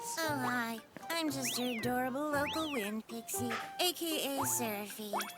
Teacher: her voice it's just oh my God that is that is that is the most condescending breathy voice that's the voice of someone who yeah so that's Rel to